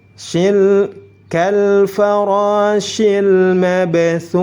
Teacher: Shil langsung masuk ke huruf lam, hamzah wasalnya tidak dibaca. Lam sukunnya dibaca jelas karena bertemu dengan huruf mim. Mim termasuk salah satu huruf qamariyah, disebut dengan izhar qamariyah.